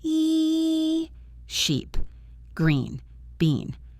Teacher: The long e in sheep or beach is a smile sound. You pull your mouth back wide.